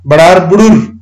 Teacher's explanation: बडार plus बडार बडार बुडुर अ ध्वनि उ मा परिवर्तन भएको छ